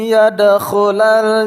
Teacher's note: dal qalqalah sugra kita pantulkan